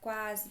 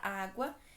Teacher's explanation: primeiro eu tenho a semivogal u depois a vogal a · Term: ditongo crescente